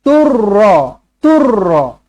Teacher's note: Tanwin bertemu dengan huruf ra sabdu. Jumpa dengan ra sabdu. Macam mana? Tidak perlu didengungkan. Cukup sekadar memasukkan sahaja. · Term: Idgham bila gunnah